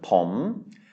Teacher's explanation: it is a high-class consonant with a live syllable because of the sonorant final. And so it is a rising tone